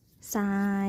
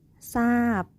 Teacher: คําควบกล้ําไม่แท้ที่ออกเสียงพยัญชนะทรเป็นเสียงซอ